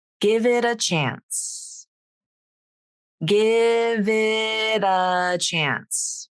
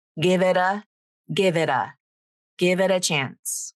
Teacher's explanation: The V links to it and the T in it becomes a flap.